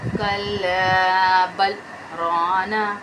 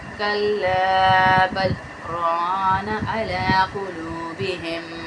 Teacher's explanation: کلا بل ران، بل کے بعد سانس نہیں لیا لمبا میں نے، پھر آگے نہیں گئی. بل میں سکتہ کریں گے، سانس نہیں توڑیں گے. جیسے ہم کہتے ہیں نا کسی کو سکتے میں آ گئی ہو، یعنی بالکل ہی خاموشی، سکتہ، لیکن سانس نہیں ٹوٹتا.